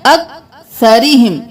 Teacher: अक्सरिहिम, सा को बहुत नरमी से सरी नहीं करना, सीन की आवाज नहीं आनी चाहिए, सा नरमी से। अक्सरिहिम, रौ बारीक पढ़ेंगे क्योंकि इसके नीचे जेर है।